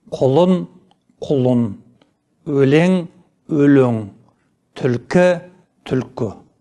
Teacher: Еріндік дауыстыларға жататын дыбыстары сөздің бас буында ғана жазылады. Ал айтылуда кейінгі буындарда да көрсетіледі.